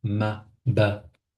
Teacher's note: Comme le mime et le ba ils sont au même endroit de prononciation. Quand on dit ma, ba, c'est des lettres de la bouche, des lèvres.